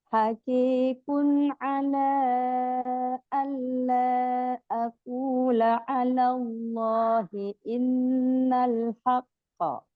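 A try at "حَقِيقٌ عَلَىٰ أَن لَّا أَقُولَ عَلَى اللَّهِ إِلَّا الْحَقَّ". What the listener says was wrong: Ya, bagus, tapi kalau lam tasdid nggak boleh ditahan loh. Nggak boleh. Illa, alla, langsung ya.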